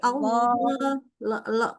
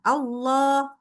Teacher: dia itu kan Allah itu memang tafkhim ya, pangkal lidah naik. Ya, pangkal lidah naik.